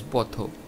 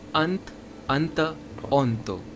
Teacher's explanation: Bengali similarly has shwa in it, but interestingly, it's not a, it's o.